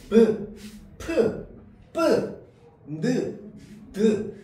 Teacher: 공기의 흐름을 막았다가 터뜨리며내는 소리입니다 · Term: 파열음